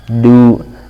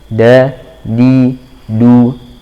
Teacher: Dannya jangan ada udara tu, tapi da, di, du. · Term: dal